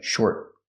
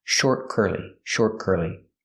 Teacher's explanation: We hear the T in short is a stop T also.